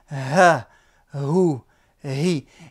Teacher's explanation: Le ha, qui se trouve au niveau du fond de la gorge, d'accord, au niveau du fond de la gorge, comme si vous expirez de l'air